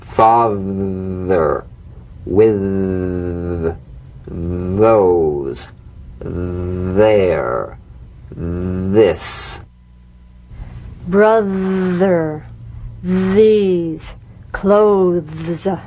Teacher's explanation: vibration feel that vibration on the tongue outside the teeth you've got to let the tip of the tongue stick outside the teeth